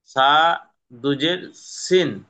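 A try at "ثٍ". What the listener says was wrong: সা দুজের আর হবে না, ওই সা দুজের পরে যদি বাম দিকে বা আসে তাহলে সা দুজেরটা হবে না, তখন হবে সা এর সাথে মিমকে ধরে পড়তে হবে সিম। বা আছে, বা থাকবে, কিন্তু এই যে তানমিনটা এই দুজেরটা হচ্ছে কে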